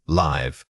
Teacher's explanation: This is the quick casual version. The vowel sound should be brief and effortless, almost like a little sigh of air. Don't let your jaw drop open. Keep it contained for that rapid, unstressed articulation.